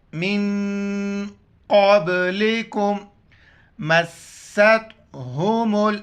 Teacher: میم کو سین کے ساتھ ملائیں گے اور سختی سے پڑھیں گے